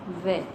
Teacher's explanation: व दंत्योष्ठ वर्ण जो है, जो कि दांत और ओष्ठ दोनों से उच्चरित होता है